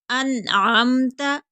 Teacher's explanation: انعمت، نون کو ظاہر کر کے پڑھیں گے